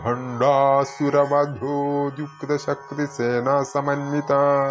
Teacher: ഇത് ചൊല്ലുമ്പോൾ ശ്രദ്ധിക്കേണ്ടത് ഭ ഇവിടെ മഹാപ്രാണനാണ്